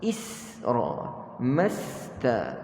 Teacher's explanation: pastikan huruf sin yang kita matikan itu kita tidak lantunkan.